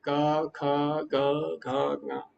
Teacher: जो क ख ग घ ञ है उसका उच्चारण कंठ से होता है